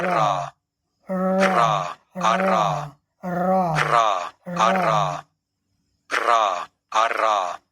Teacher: जीभ हमारी फड़फड़ा रही है, ट्रिल कर रही है थोड़ा।